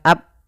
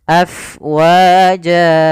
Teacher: Apabila ada huruf fa, dia memiliki sifat namanya hamas, yaitu mengalirnya nafas af, bukan ab, jangan ditutup, tapi af mengalir.